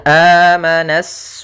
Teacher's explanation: asufaha di sini ada alif lam syamsiah alif lam syamsiyah yaitu alif lam yang ditulis tapi tidak dibaca sehingga kita langsung masuk ke huruf sinnya